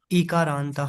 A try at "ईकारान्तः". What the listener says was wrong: Dirgha. Ikarantaha. Make it more.